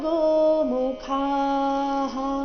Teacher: ಖ ಮಹಾಪ್ರಾಣ ದೀರ್ಘ ಹೇಳಿದ ನಂತರ ವಿಸರ್ಗದ ಉಚ್ಚಾರಣೆ ಹ ಎಂದು ಹೇಳಬೇಕು